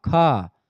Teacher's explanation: तो इसलिए इसको महाप्राण प्राण माने वायु यानी ज्यादा वायु निकलती महाप्राण यानी ज्यादा वायु निकलती है ख से